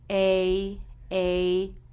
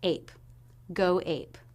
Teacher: It begins with the A as in say diphthong. Make sure you drop your jaw enough for the first sound of that diphthong. A, P. And finally, the P sound.